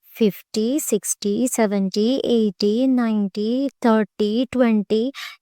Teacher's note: for the words that denote the multiples of 10 the stress falls on the first syllable